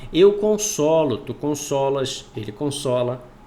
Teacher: consolo, com o O aberto, na primeira pessoa do singular, do presente do indicativo do verbo consolar